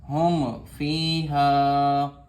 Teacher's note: فا یا میم ساکن کے بعد تو میم کو ظاہر کر کے پڑھیں گے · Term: اظہار شفوی